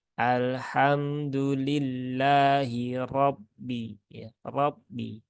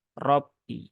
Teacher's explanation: huruf ro ketika dia berharokat fathah, maka dia dibaca dengan tebal. Nah, ini adalah salah satu sifat aridhah dari huruf ro yang dia tebalnya itu ya kadang muncul, kadang tidak sesuai dengan kondisinya.